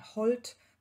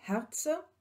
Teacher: H als Hauchlaut, nämlich im Anlaut, wie bei Holt zweimal und bei Herze.